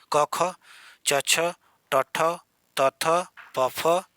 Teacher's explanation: इन ध्वनियों को उच्चारण में स्वर तंत्र में कंपन नहीं होता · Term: अघोष